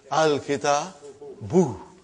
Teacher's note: Instead of bun, it became bu.